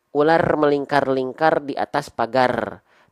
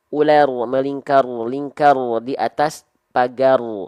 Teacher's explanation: takrir itu artinya bergetar tapi tidak terlampau berlebihan